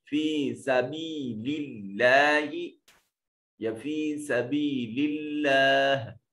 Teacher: और इसमें जलालत से पहले वाले हर्फ के नीचे जेर है, इसमें जलालत को मुरक्कक यानी बरीक पढ़ा जाएगा